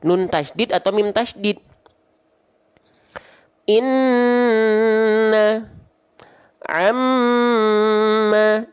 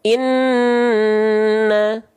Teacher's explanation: dia ditahan karena ada hukum gunah dengung dan ditahan dua harakat